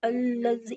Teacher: جی الذی، الف میں لام کو ملائیں گے، تشدید ہے، سختی ہوگی، 2 بار پڑھیں گے لام کو. الذی، یا مدہ ہو رہا ہے، یا ساکن اس پہلے زیر ہے، یا مدہ ہو رہا ہے زال پہ.